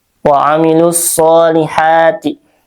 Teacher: alif lam bertemu dengan huruf syamsiyah yaitu shad ya jadi dibacanya dilangsungkan atau diidgamkan waamilus shihati nah sh mad t thatabi'i ya karena di situ ada harakat fathah berdiri ya di atas sadnya. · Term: alif lam syamsiyah